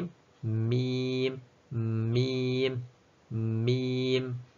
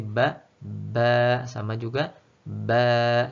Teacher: Kita mempertemukan dua bibir dulu, kemudian kita menarik berjauhan.